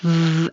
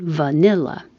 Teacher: Make sure you have a good V, teeth on bottom lip, v, and vibration and airflow. V. Same as the F, but with voicing.